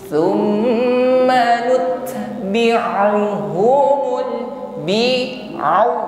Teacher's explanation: Hati-hati mengucapkan ain, keluar dari wasatul halqi, tenggorokan tengah, sifatnya lunak saja. Tawassut juga, au, tidak kaku sebagaimana huruf hamzah.